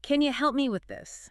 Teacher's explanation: help me often links really tightly. It can almost sound like help me with the mi sound being super short.